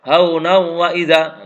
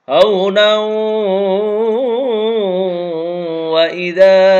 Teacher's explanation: nunnya luluh ke wawu dan dibaca gunnah. Haunau, direm agak lama, enggak boleh haunau wa idza. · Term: idgham bi gunnah